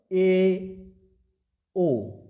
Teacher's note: जैसे समझिए जैसे मैं बोलता हूं ए ओ तो थोड़ा ज्यादा उ और इ की अपेक्षा क्या है थोड़ा ज्यादा मुह खुल रहा है